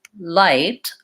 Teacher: when I say light I use little more pressure on my tongue I'm I'm pushing against the top